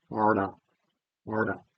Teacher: The retroflex tap, the tip of the tongue starts in a retroflex position and it sort of uncurls, it straightens out forward, and it glances off the alveolar ridge or thereabouts on its way past.